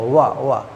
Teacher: दंत ओष्ठ व्यंजन बोल देते हैं, क्योंकि दांत और ओठ से स्पर्श करता है